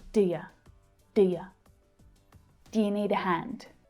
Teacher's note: we have the auxiliary verb do and the pronoun you both are unstressed so when they reduce it sounds like deer deer do you